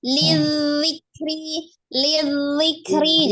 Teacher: keluar dari ujung lidah yang bertemu dengan ujung gigi seri bagian atas ya memiliki sifat yang mengalir